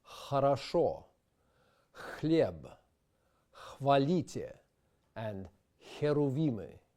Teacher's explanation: This sound is formed deep in the back of the throat, as if you're trying to fog up a mirror in front of you. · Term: unvoiced aspirated sound